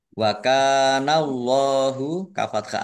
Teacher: berhenti lebih baik wallahu kafth Alif Mad Thobi'i panjang dua harakat Allahnya dibaca tebal karena harakat depannya fathah